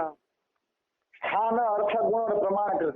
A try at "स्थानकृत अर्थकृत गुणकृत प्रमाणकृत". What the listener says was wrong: तो अलग अलग बोलो, स्थानकृत अर्थकृत ऐसे बोलो। ये क्या होता है, स्थान अर्थ और कृत कर दिया, क्या बोलो सही से।